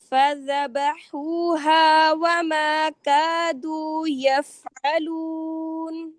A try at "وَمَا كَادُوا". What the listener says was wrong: اور الفات کو بھی بڑا منہ کھول کے نہ پڑھیے. وما کادو نہیں، وما کادو کم منہ کھولیں. عربی لہجے میں منہ کو زیادہ نہیں کھولتے ہیں، ٹھیک ہے؟ سہولت کے ساتھ جتنا کھول رہا ہے بس اتنا، زیادہ بڑا نہیں.